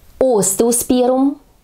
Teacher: И следующий цветок остеосперум именно с ударением на первый слог